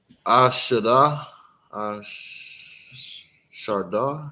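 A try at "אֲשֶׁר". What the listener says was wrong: A shar. So yeah, knowing the difference between a ra and a da. Pretty important, right?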